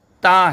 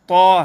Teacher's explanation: تا یہ باریک حرفوں میں سے ہے اور تو یہ پر حرفوں میں سے ہے